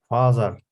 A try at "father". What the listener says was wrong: Так, father, то есть не з мы говорим, да? У нас межзубные. T и H — это у нас звук the — это межзубный.